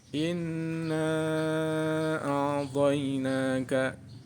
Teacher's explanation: Kedua, Inna a'tainaka. Hukum bacaan mad jaiz munfasil. Karena ada mad bertemu alif tidak satu kata. Cara membacanya dibaca 4 atau 6 harokat.